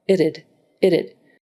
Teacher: So and then d is another fronted consonant. So you have to go from a soft airy sound with a t to the voiced version d. And they're made in the same place. So really it's more like itided it. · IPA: /ɪtəd/